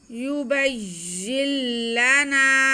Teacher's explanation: युबय्यिन, या के नीचे ज़ेर है, ये ज़ेर जो है उसके बाद नून साकिन है और आगे लाम है, तो हम इस ज़ेर को इस लाम के साथ मिलाएंगे क्योंकि ये लाम मुशद्दद है। नून साकिन के बाद लाम आ रहा है, तो यहाँ पे इदगाम का कायदा है, इदगाम बिला गुन्ना, तो हम या का जो ज़ेर है उसे हम लाम के साथ मिला लेंगे।